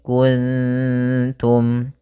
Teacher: cara membacanya yaitu samarkan nunnya kepada huruf ta makh daripada ta yaitu ujung lidah kita menempel dengan gusi atas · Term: Ikfa